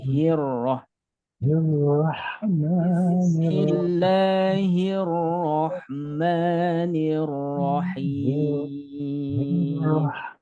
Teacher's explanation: Hi ini agak menggema ya, karena keluarnya dari pangkal tenggorokan. Jangan sampai Bismillahirroh kurang, tapi hirroh. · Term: huruf hi-nya